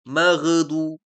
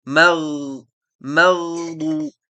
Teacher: Dia tidak ada sifat syiddah atau sifat qalqalah. Dia juga mengalir suaranya.